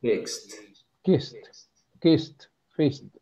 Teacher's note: past you see the e but you pronounce it like T the Ed is pronounced like T